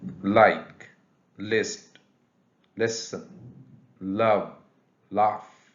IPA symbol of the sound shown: l